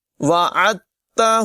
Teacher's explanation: دال کو نہیں پڑھیں گے، عین کو تا سے ملا لیں گے